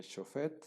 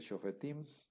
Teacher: Este sereg, que es una vocal larga, se elide y se convierte en un sheva.